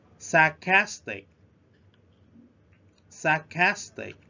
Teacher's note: We stress at the second syllable.